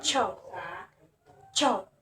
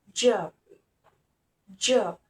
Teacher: Ch and J different voicing, with Ch being voiceless and J is voiced. Their place of articulation is pilot alveolar, which is the front part of the roof of the mouth. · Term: affricate